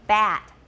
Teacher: all you have to do is open your mouth really wide the a is the lowest front vowel we have in English